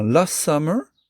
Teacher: le son T disparaît complètement